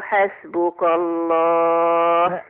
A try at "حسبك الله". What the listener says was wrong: ما قولش حسبك الله. ما قولش حسبك الله. حسبك الله. حسبك الله. الكاف هنا فخمتيها.